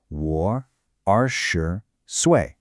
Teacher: The dip on a war and that sharp clean drop on sway.